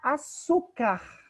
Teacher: su é a sílaba tônica, então recebe o acento.